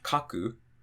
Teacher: counting from the end, we have 1, 2, the drop is going to be after the ka